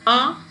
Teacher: this is ah and you can call it as back open rounded